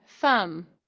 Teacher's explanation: It's a tongue biter. You know, my tongue is coming out. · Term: th sound